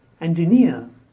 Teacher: the stress on the last syllable